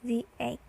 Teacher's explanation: Normally we pronounce the with a short sound like the, but when the comes before a vowel sound, we pronounce it as a long the